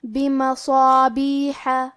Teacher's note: حرف الحا کی ادائیگی حلق کے درمیان والے حصے سے ہے · ہم مد الف کو بھی بھاری آواز میں پڑھیں گے